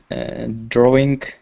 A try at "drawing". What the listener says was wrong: A little problem with the G, though. Drawing. You're saying drawing with a K. But I want you to say it with a G. Drawing.